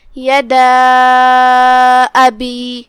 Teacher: کلمت ابی کی شروعات میں یہاں حمزت قطع ہے، لہذا ہم حمزہ کو ظاہر کریں گے جو کہ حمزہ کی ادائیگی حلق کے نیچے والے حصے سے ہے · مد جائز منفصل کا معنی ہے کہ حرف المد پہلے کلمہ کے آخری میں ہو اور اس کی وجہ جو کہ حمزہ ہے وہ دوسرے کلمہ کے شروعات میں آئے. مد جائز منفصل میں ہم اپنی آواز 2 سے 4 مد کے برابر لمبی کریں گے